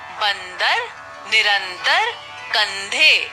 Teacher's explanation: बिंदी वाले वर्ण को बोलते समय हवा नाक से निकलती है? हम इन बिंदी वाले वर्णों को नाक बंद करके नहीं बोल सकते। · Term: अनुस्वार